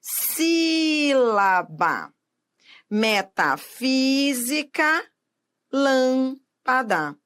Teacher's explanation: A sílaba tônica é a antepenúltima sílaba da palavra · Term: proparoxítonas